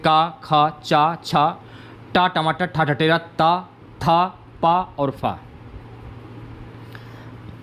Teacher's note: जिन वर्णों के उच्चारण में गले में कंपन नहीं होता उन्हें अघोष वर्ण कहते हैं